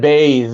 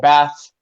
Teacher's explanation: your tongue is in the same place more or less but the difference is do you vibrate your throat or not bath no vibration base is with vibration and so the same